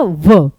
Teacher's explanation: व नीचे का होंठ ऊपर के दांत, तो दंतोष्ठ है।